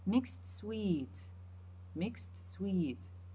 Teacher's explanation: k, s, t, and s, w, 5 consonants in sequence